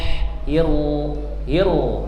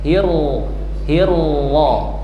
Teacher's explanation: Ketika hir ujung lidahnya naik ke gusi atas.